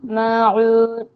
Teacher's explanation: आइन का मखरज हलक के दरमियानी हिस्से से अदा होगा